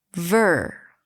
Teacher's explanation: Longer, louder, higher in pitch. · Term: primary stress